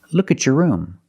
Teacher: When you have a T before a Y in two separate words, and you link the pronunciation of the two words, you will hear the ch sound.